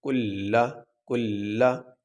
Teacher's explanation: تو یہاں پہ لام کے اوپر تشدید ہے اور لام سے پہلے جو حرف ہے وہ کاف ہے، اس کے اوپر حرکت ہے، تو لام کو اس کاف کے ساتھ ملا کے سختی سے ادا کیا جائے گا